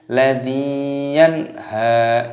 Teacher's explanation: Ladzi dinya berharokat kasrah ada ya sukun dibaca panjang